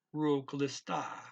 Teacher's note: Extend that a sound a little bit, about 1.5 beats. So you don't double the length of the a, you extend it.